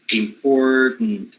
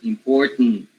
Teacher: as simple as just having a syllabic nasal consonant